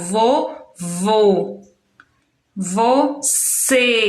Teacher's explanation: já o acento circunflexo e quando ele é usado a gente tem um som fechado